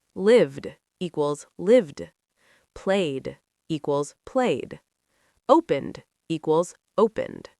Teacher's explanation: Sound 2, d, like D, when the verb ends in a voiced sound. B, G, V, Z, M, N, L, R, vowels.